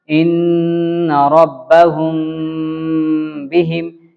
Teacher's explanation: میم ساکن کے بعد با آئے تو غنہ کے ساتھ اخفاء ہوگا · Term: اخفاء شفوی